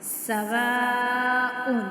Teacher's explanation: اب یہاں پہ حمزہ پہ جو ہے نا مد ہے تو اس کو ہم 5 الف کے برابر کھینچیں گے